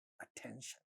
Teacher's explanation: In all these words like attention, this is the stressed syllable, ta at the syllable initial position gets aspirated